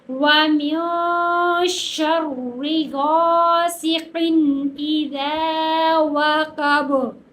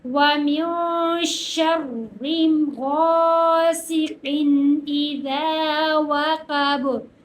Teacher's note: واو، واو کے اوپر زبر ہے، قاف کے اوپر بھی زبر ہے، کاف موٹے والی ہے، اسے موٹے والی ہی پڑھیں گے۔ با، با کے اوپر زبر ہے لیکن ہم زبر نہیں پڑھیں گے، اس کے ساکن کریں گے، اگر ساکن کریں گے تو یہاں پر قلقلہ کریں گے۔